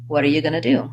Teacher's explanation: First of all, I link what and are. And because of this T is now between two vowel sounds, it becomes a flap T, sounds like a light D, or like a front flapped R.